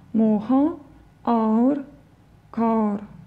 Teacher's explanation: всегда в сочетании этих звуков ударение падает на первый звук